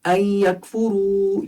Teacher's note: اس کو آپ بالکل پتلا پڑھیں گے اور بغیر قلقلے کے اس کاف کو